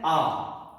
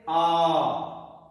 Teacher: प्लुत स्वर, उनका उच्चारण दीर्घ स्वर से भी दुगनी मात्रा अर्थात दोगुने समय के साथ किया जाता है।